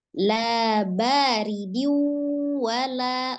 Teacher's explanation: Kemudian ridiu, ada dal kasroh tanwin bertemu dengan waw kembali, nun sukun atau tanwin yang bertemu dengan huruf waw dihukumi idgham bi gunnah ya, dilebur ke dalam waw bertasdid kemudian disertai dengan dengung.